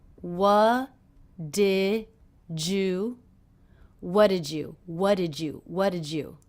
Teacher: a J sound here jew-jew what did you did jus so the D and the Y here are combining to make the J sound so we have what did jus what did you what did